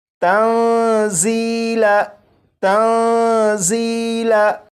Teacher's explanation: یہاں پر دیکھیں، یہ جو لفظ ہے، اس لفظ میں یہاں پر یا ساکن سے پہلے زیر ہے، لہٰذا یہ جو یا ہے یہ یا مدہ ہے، اور اس لفظ کو اگر پڑھیں تو یہ پڑھا جائے گا تنزیلا تنزیلا۔ یہاں پر یا کو ایک الف کے برابر کھینچ کر پڑھا، کیونکہ یہاں پر یا مدہ ہے